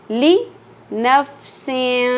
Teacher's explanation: छुपाया जा रहा है नून साकिन की साउंड को जो 2 ज़ेर तनवीन के अंदर आती है। सीन 2 ज़ेर सिन होता है ना, सिन सिन के एंड पे नून साकिन की साउंड है। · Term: इख्फा